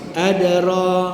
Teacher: Sebab di tengah kalimah, maka kita baca qalqalah sughra tanpa termati bacaan, tanpa terputus bacaan.